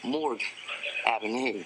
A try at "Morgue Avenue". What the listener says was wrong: It's not Morgan, honey. It's Morgue.